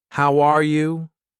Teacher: when I say how are you, my voice goes up at the end. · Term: Intonation